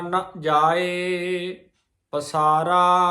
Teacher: ਨ ਨਨਾ ਮੁਕਤਾ ਆ ਇਹਨੂੰ ਨਾ ਨਹੀਂ ਕਹਿਣਾ